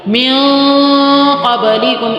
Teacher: آدھی منہ میں اور آدھی ناک میں آواز رہے گی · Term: اخفا